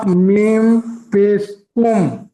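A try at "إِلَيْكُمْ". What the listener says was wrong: একটু কুম গুন্নাটা আর একটু করবেন।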